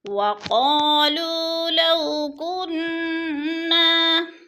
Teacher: وقالوا لو كنا قاف پر پڑھا جائے گا، لو قا کو بھی کھینچیں گے الف مدہ ہے، لو کو بھی کھینچیں گے الف مدہ ہے، پھر آگے لو کو نہیں کھینچنا، ادھر بولین ہے۔